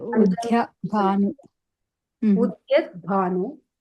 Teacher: There is no dha. It looks like the dha, but it is actually da, the soft Devi's da and ya combination. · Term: softer da